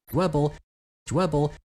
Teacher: there's formants forming during the noise of the affricate, and it's way more noisy than you'd expect for a voiced or lena stop in English. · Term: rounded affricate